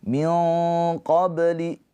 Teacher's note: Nun sukun bertemu dengan huruf qof. Ikhfa hakiki. Nunnya ditahan dua harakat.